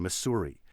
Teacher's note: pushing for those two s's in the middle to be pronounced sibilant hissing s rather than the z sound the soft sound so probably if you pulled people in the